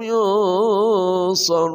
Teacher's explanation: nun mati bertemu shad namanya ikhfa haid samar dan dengung